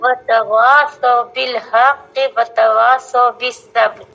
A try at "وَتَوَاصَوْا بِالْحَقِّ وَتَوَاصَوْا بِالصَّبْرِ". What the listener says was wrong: ہاں کے نہیں، حق کے، ہاں پر زبر ہے، اس کو نہ کھینچیں.